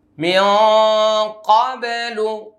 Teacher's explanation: মিন ক্বাবলু ইকফা, গুন্নাটা মোটা হবে